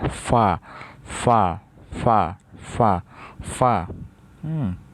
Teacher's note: কিনারা উপরের মাড়ির দাঁতের সঙ্গে লাগাইয়া জদ জাদ 10 নাম্বার মাখরাজ নিচের ঠোঁটের পেট সামনের উপরে দুই দাঁতের আগার সঙ্গে লাগাইয়া নিচের ঠোঁটের নিচের ঠোঁটের পেট পেট সামনের উপরে দুই দাঁতের আগার